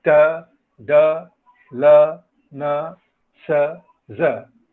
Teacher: These are all alveolar sounds because the tip of the tongue or the blade of the tongue comes to play with the teeth ridge.